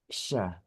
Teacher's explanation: sya itu makhrajnya adalah lidah tengah. Jadi lidah tengah itu kita angkat gitu kan ya. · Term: huruf shin